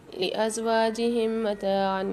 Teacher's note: میم ساکن کے بعد دوسری میم مشدد آ رہی ہے، غنہ کر کے پڑھیں گے